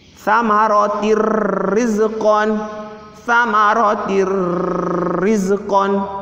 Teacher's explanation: Ketemu sama roh ini huruf bila guna, maka dibaca dimasukkan tanpa dengung.